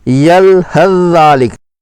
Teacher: ثا کو ذال میں مدغم پڑھا گیا ہے